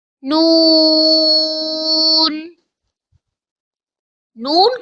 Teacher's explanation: Noon comes from tongue, touches the roof of mouth, and air throw out from nose side to pronounce Noon.